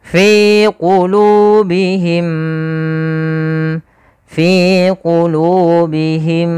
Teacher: kita kita bahas bahwasanya di situ adalah hukum bacaan am Mimi cara membacanya adalah kita tahan dulu suara mimnya yang pertama masukkan kedua dan ditahan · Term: idgham mimi